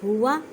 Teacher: ہا کو حلق کے نیچے والے سے ادا کریں